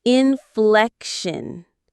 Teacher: The stress is on that middle syllable, fleck.